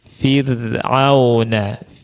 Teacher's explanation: Firuna ini rnya juga tipis.